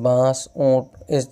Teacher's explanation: اخفاء جو ہے غنہ کے قریب قریب ہوتا ہے، اور بانس، اونٹ، اس طرح کی آواز جو ہے اس میں سے تھوڑی سی نکلتی ہے، لیکن اس کا خیال ہے کہ اخفاء کے ادا کرتے وقت زبان کا کنارہ اوپر کے تالو کے قریب تو جائے گا، لیکن اوپر کے تالو سے بالکل لگے گا نہیں۔